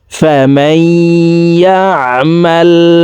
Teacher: হরফের একটি হরফ ইয়া আসছে এই কারণে এই জবর ওয়ালা মিমটি তাসদিদ ওয়ালা ইয়ার সাথে গুন্নার সহিত মিলাইয়া পড়তে হবে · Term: ইদগামে বাগুন্না